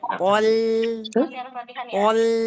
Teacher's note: Po tebal, lam tipis. Jadi pol. Pol.